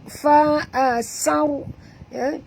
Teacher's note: Fa asar tebal ya, kerana ra yang pertama mati. Bila ra itu mati, huruf sebelum ni baris atas, kena baca tebal.